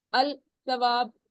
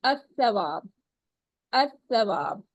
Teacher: तो हम लाम को नहीं पढ़ते फिर हम पढ़ते हैं अ सवाब अ सवाब मिलाते वक्त जबान